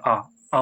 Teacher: जिह्वा के मध्य भाग से जो स्वर उच्चारित होता है वो आ होता है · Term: मध्य स्वर